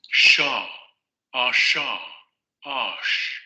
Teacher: Era un postalveolar fricativo sordo.